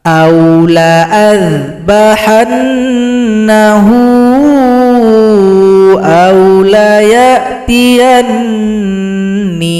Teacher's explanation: Jadi langsung hamzah digabung pada huruf dza.